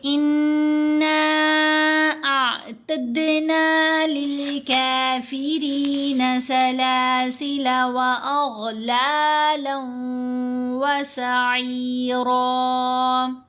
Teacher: یہاں ہم پڑھیں گے اِنَّا اعتدنا للکافرین سلاسل واغلالا وسعیرا، نون کے اوپر یہ جو مد ہے یہ مد منفصل ہے، مد منفصل کی جو پڑھنے کی مقدار ہے وہ 3 حرکات کی مقدار کے برابر ہے